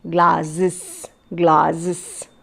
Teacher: the morpheme e s is uh pronounced z glasses glasses so see the variation in the s and e